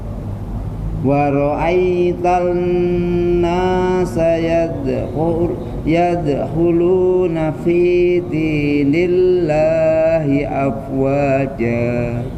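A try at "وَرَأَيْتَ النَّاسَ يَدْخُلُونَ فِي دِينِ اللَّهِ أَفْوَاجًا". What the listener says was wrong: Nah, segitu Pak ya.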